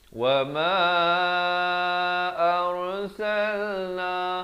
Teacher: Wa ma arsalna, dibaca tebal, jangan baca ar. Ramai yang masih lagi keliru pada bacaan huruf ra. Ada yang dibaca nipis, ada yang dibaca tebal. Di sini ra-nya dibaca tebal.